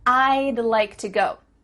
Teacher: Do you see how we can speak quicker because we're cutting off all the sounds in the word would except for that final D